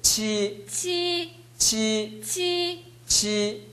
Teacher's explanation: 지금 두 학생이 치 발음이 파열이 약해요.